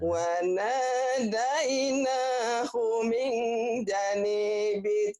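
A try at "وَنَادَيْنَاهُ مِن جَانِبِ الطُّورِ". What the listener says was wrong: janya panjang. Minja, nibis. Janibit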